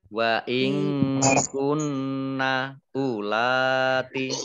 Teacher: unya pendek lanya panjang